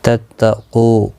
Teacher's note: قاف مستعلیہ ہے، پر پڑھا جائے گا. کو واو مدہ ہے، ایک الف کی مقدار کے برابر کھینچ کر پڑھیں گے.